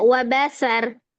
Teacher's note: Itu sin ya, bukan shin, bukan wabashar. Jangan ke bawah ro-nya tebal, sinnya ikut jadi shin.